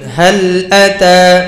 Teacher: এখানে সবগুলো হরফেই, শব্দের মধ্যে সবগুলো হরফেই বারিক পাতলা ইস্তিফালে হরফ, মুখকে পাশের দিকে খুলতে হবে।